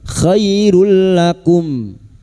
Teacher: Nun sukun atau tanwin yang bertemu dengan huruf lam dan ro masuk tanpa mendengung. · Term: idgham bila gunah